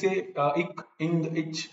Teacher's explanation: people think they are pronouncing the pure consonant, they will typically say ik, ing, ich, like that. But they are adding a vowel before that.